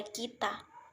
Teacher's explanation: bunyi dapat dikelompokkan menjadi empat yaitu yang pertama bunyi tinggi adalah bunyi yang dihasilkan dengan cara posisi lidah meninggi mendekati langit-langit keras caranya rahang bawah merapat ke rahang atas Misalnya I pada kita